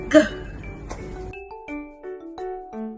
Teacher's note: The G sound is produced at your velum or your soft palate. So you can feel when you pronounce the sound G, it is at your soft palate. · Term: velar